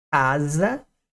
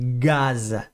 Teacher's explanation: é o mesmo posicionamento ó casa gaza só que o c não vibra